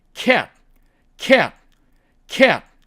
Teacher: 이렇게 모음이 있을 때는요, 트 하고 터뜨리지 않고요, 보통 cat 하고 거기서 끝납니다.